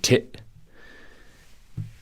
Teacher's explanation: Glottal stop when you drop the T.